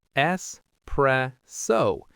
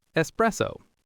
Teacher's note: So there's no X sound at all. It's an S.